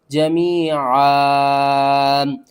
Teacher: ایک زبر کو ختم کرتے ہیں، دوسری زبر کو الف کے ساتھ پڑھتے ہیں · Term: وقف